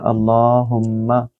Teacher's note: میم مشدد ہے ادھر ہما پر، تو یہاں آپ نے اس کو اپنے ناک سے یعنی کہ غنہ کرنا ہے